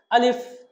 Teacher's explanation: আলিফ হরফটা কোনো টান হবে না। দ্রুত উচ্চারণ করতে হবে, কুইক সাউন্ড হবে।